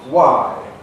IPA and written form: waɪ (why)